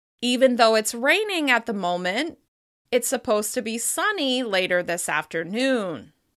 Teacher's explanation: You can hear that the slight rises between ideas keep us listening until the sentence is complete.